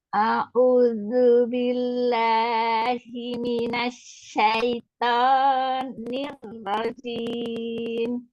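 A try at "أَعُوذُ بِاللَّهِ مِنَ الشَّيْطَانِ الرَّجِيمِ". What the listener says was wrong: Jangan terlalu panjang. Syaiton gitu, jangan yang 2 aja. Syaitonirrajim.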